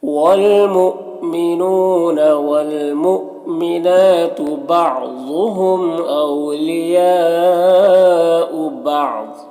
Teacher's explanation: یا میں یہاں پر مد متصل ہے، یہ جو مد ہے مد متصل ہے، اسے 3 سے 4 الف کے برابر کھینچ کر پڑھیں گے. یہاں پر وقف کریں گے تو ضاد کو پر پڑھیں گے اور یہ تنوین سکون سے بدل جائے گا. یہ میم جو ہے یہ وقف لازم کی علامت ہے، یہاں پر اٹھارنا ضروری ہے، تو اس طرح سے پڑھیں گے.